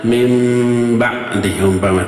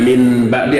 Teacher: nun mati menghadapi huruf ba, disebutnya apa? Iqlab. Si nunnya berubah menjadi apa? Mim.